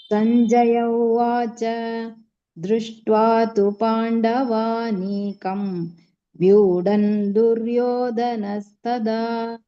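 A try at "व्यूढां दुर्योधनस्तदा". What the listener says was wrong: Dha slightly more stress more.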